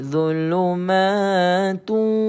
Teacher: [Musik] maalun baca panjang idgham ialah memasukkan ya tuan Puan idgham kita masukkan sebutan tanwin dammatain ini ya ke dalam wau sebab tulah kita baca gini zulumatu gitu tanwin tu tak ada